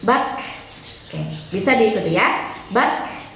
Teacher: salah satu sifat huruf kaf itu adalah hamas, jadi harus terdengar jelas keluar anginnya.